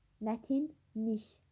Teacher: Mətin sözü olduğu kimi qalır. Lik şəkilçisi nik şəklində tələffüz olunur.